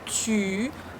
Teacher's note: Tu, our tongue touches our lower teeth and our lips go forward.